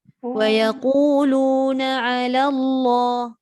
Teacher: 'Ala Allah, dia kena tebal kalimah Allah.